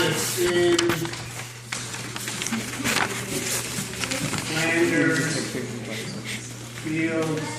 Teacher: So if we're breaking it up, unstressed, stressed, unstressed, stressed